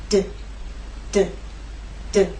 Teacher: you will feel vibration when you make the D sound